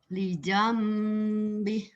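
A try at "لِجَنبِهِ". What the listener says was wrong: Ibu belum lepas suaranya tuh. Udah bagus padahal.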